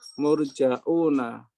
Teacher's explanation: Murjauna menjadi murjauna, menambahkan hamzah dhammah setelah jim